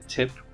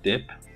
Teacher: they're alveolar plosives, the difference being that T is voiceless and D is voiced